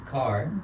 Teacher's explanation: el sonido K de car es un sonido gutural, se produce en la garganta. Es un sonido, en inglés le llamamos voiceless, que no suena, que no vibra.